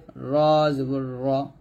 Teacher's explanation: র এর উপরে জবর থাকলে মোটা করে পড়তে হবে